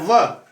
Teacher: अब दंतोष्ठ, आगे क्या मैंने क्या कह रहा है, दंतोष्ठ यानी दांत और ओष्ठ, दांत और ओठ दोनों में आता है व।